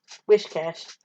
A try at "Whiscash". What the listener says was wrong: It's not wish, though. whis.